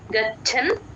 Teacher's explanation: చ కింద చ ఒత్తు మహాప్రాణం మనం రెండు వినిపించేటట్టు